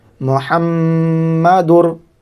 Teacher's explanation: وہ تنوین کو را میں ادغام کر رہے ہیں، ادغام بلا گنہ۔ دال را دو پیش در، محمدر، را زبر را، محمدر را۔